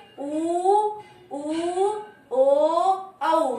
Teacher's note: हमारे होठों की आकृति वृत्त के समान हो जाती है, सर्किल में हो जाती है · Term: वृत्ताकार